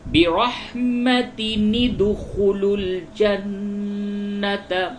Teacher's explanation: اب تن ہے تو اسی نون کو دال سے ملا دیا جائے گا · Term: تنوین